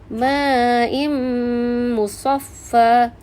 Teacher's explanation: Tanwin gabungkan dengan huruf mim dan dengung 2 harakat. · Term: idgham ma'al gunnah